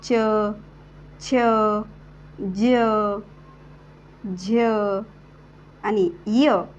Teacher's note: यामध्ये य चा उच्चार शेवटी होतोय म्हणजेच हे वर्ण य युक्त होतेत म्हणून या य च्या उच्चाराने जिभेचा टाळूला स्पर्श होतो तो केवळ